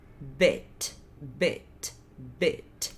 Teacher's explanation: o som do E é entre o E e o I, os dois fechados do português. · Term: pronúncia curta do I